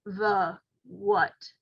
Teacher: those words have a schwa sound, and a schwa sound is very frequently found in those short high frequency words. That sound, the, what, very, very common.